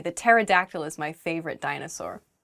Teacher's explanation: Pterodactyl begins with a P, but we don't say the P. It just starts with a T sound.